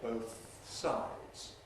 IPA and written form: ˈbəʊθ ˈsaɪdz (both sides)